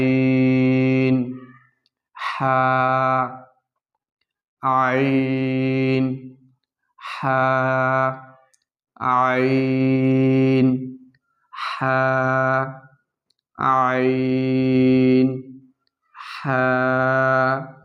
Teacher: আইনকে অবশ্যই আপনারা হলকের মধ্যখান থেকে চাপ দিয়ে চিকন করে পড়ার চেষ্টা করবেন আর হাটা হলকের মধ্যখান থেকে একটু বাতাস বের হবে প্রিয় বন্ধুরা